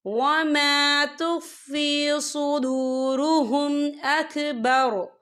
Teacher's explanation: وقف کی صورت میں را جو ہے ساکن ہو جائے گا